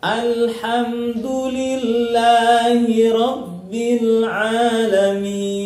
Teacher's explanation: Terus ada ain. Ain panjangnya 2 harokat, yang bisa kita sebut dengan mad asli atau mad tabi'i.